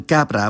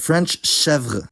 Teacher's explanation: When k was before a in Old French, it initially became ch, and then later sh.